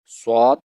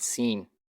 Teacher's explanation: Swad is a thicker version of sin. More space above the tongue is left than below to pass more air from above the tongue. Swad is pronounced by making rounded lips like an O shape.